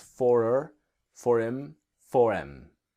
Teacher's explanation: the H will disappear speaking quickly. H in I-M, H-I-M, so it's for her, for him, for em.